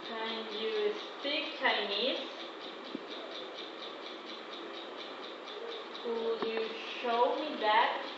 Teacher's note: we are using the rising intonation in yes no question a standard and high